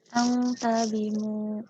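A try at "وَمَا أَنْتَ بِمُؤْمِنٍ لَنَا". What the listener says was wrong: Wa ma anta. Ma-nya panjang 6 harokat ya. Tadi belum panjang tadi. Wa ma anta bimu'minil. Kasrotain ketemu lam. Bimu'minil lana.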